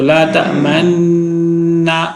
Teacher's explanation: اس ہونٹ گول کرنے کو کہتے ہیں کہ لا تأمن پڑھتے ہوئے ہونٹوں سے پیش کی بو دینا، پیش کی طرف اشارہ کرنا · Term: اشمام